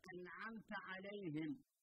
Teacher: نبدأ بالعين في سورة الفاتحة مثلا، أنعمت عليهم، لاحظ عزيز الطالب النون في كلمة أنعمت حكمها الإظهار، السبب لمجيء حرف العين بعدها